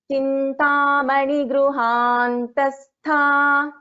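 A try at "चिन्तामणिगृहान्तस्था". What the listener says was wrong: Chintamani Gruhantastha. Chintamani Gruhantastha.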